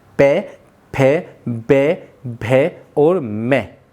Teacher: जब हम ओष्ठ का उच्चारण करते हैं तो वायु हमारे होठों पर घर्षण करके निकलती है